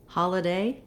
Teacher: So holiday has first syllable stress, and letter O in holiday says the ah sound. So very often in a stressed syllable, when we have an O in English, we actually say the ah vowel.